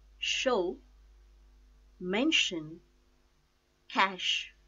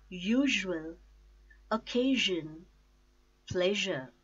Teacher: Voiceless consonant sh sound and voiced consonant sh sound. Sh as in show, mention, cash.